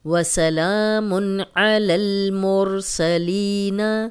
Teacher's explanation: جروفن ہارن، جروفن ہارن، وسلام علی المرسلین، وسلام، لام پہ کھڑی زبر ہے، 2 حرکات لمبا کیا ہے، 2 زیر آ گئی اور آگے حروف حلقی تھا، غنہ نہیں کیا، اب 2 پیش آ گئیں، آگے عین آ گیا حروف حلقی تو غنہ نہیں کریں گے